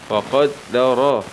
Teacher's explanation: راء فتحة مع التفخيم